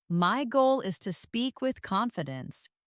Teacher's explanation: Notice how my voice rises on goal and falls on confidence.